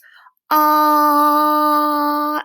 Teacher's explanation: do you feel it vibrate that means it's a voiced sound it's also continuous instead of stopping do you hear how it goes ah until you run out of breath that's a continuous sound so it is a vowel it's voiced · put your hand on your little voice box here and say ah do you feel it vibrate that means it's a voiced sound it's also continuous instead of stopping do you hear how it